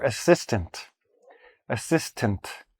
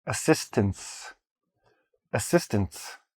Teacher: They'll stress that TS sound to make sure it's different from the CE sound